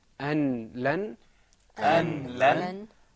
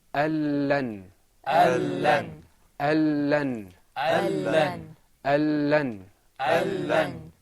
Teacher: The noon is going to disappear with the next, and both letters are going to become one letter, and we're going to stress the sound. Okay, but there isn't going to be a ghunna. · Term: idgham